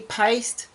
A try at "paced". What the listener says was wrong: That's what you said, paste. You said paste.